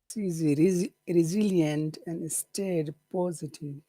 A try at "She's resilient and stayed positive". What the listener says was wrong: okay is it state or stayed stayed that's important